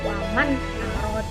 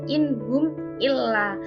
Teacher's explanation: yang bertemu dengan salah satu huruf Idar tadi itu maka eh cara pembacaannya itu dengan jelas tanpa mendengung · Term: izhar